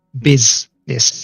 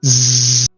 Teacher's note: the first s is made by vibrating your larynx as you speak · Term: zed sound